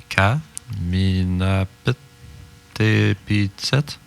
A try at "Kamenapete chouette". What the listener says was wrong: Kamenapete chouette. Ah, il manque une syllabe encore. Kamenapete chouette. Ouais. Kamenapete chouette. Kamenapete chouette, le dentiste.